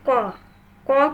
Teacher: কণ্ঠ নালির গোড়া থেকে উচ্চারিত হচ্ছে কাজেই এটা কণ্ঠবর্ণ